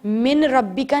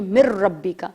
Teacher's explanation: میم کو میں نے ڈائریکٹ را سے ملا دیا اور نون کی ایگزسٹنس ہی ختم کر دی، تو ہم اسے ادغام کہتے ہیں.